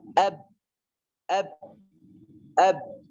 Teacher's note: Ba, kita membunyikan huruf ba karena dia terlepas. Kalau tidak terlepas, maka suara ba tidak akan keluar. Gak keluar suaranya.